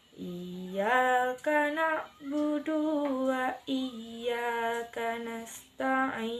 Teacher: terdapat huruf ain yang makhrajnya di tengah tenggorokan